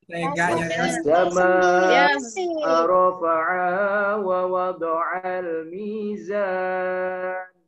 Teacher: Meleburnya alif lam syamsiyah. Kemudian as-sama'a berhadapan dengan hamzah. Panjang bacaannya mutlak 5 harokat.